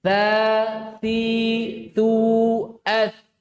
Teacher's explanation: Ujung lidah bertemu dengan ujung gigi seri atas.